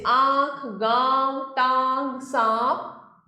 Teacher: अनुनासिक का उच्चारण नाक और मुंह से किया जाता है।